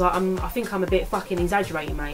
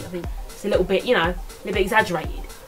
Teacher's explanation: there's a lot of glottal stops in this accent